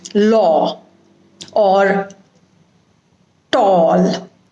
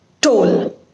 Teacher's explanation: if you are talking about law it has to be a broad sound law or tall not toll because the two words and two different pronunciations have different meanings